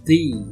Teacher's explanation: One is for strong form, and it is the. It's a long sound, E sound.